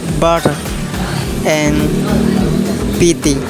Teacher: Taps are similar to plosives, but a tap is a single brief burst with little accumulation of pressure at the place of articulation, which results in a contact time that is usually much less. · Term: Taps or flap